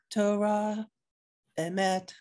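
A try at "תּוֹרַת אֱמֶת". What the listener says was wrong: Torat. It's a T at the end. Torat. It's not a hey. I'm just telling you, it was Torat.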